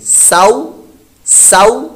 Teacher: سین کی آواز کے ساتھ واو ہے تو واو پر ہونٹ ہمارے گول ہو جائیں گے. سو سو، اور لمبا نہیں کرنا. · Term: حروف لین